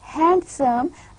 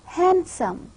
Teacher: the pronunciation is not handsome rather the exact pronunciation is handsome the duh sound is omitted because the da sound it is a weak alveolar consonant which is existing between the sounds like na and sour consonant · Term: elided